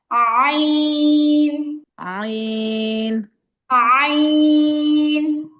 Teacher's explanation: আ মানে শুরুতেই গলার মাঝখান থেকে উচ্চারণ আসবে